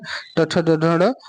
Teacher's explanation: ट ठ ढ मूर्धन्य हो जाते हैं